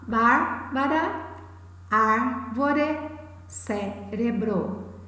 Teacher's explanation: elas possuem a antepenúltima sílaba tônica, ou seja, elas são palavras proparoxítonas